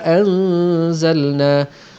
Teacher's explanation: Wa dhallalna 'alaikumul ghamama wa anzalna, nampak nun mati bertemu dengan zai, hukum dia ikhfa hakiki, dengung 2 harakat. Dengung ikhfa ialah dengung bercampurnya bunyi nun mati dengan sebahagian unsur bunyi huruf selepasnya. Di sini bunyi zai. Ada getaran zai dalam bunyi dengung nun mati tadi.